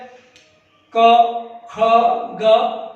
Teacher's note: मुख के अंदर हम जैसे बोलते हैं क ख ग, तो क को हम कंठ से उच्चारण कर रहे हैं, ख को कंठ से